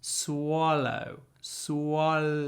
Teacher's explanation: the vowel is just the sound that comes out as we move from W to L swallow swall like that look at my tongue